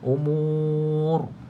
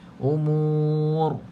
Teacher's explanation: baca dengan tafhimu bacaan tebal